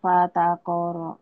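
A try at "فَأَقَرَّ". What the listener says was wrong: Fa'aqara bukan fataqara. Kalau baca Quran, ujungnya jadi sukun. Fata'ata fa'aqar. Fa'aqar. Kenapa nggak panjang? Karena nggak ada mad di sini di ujungnya.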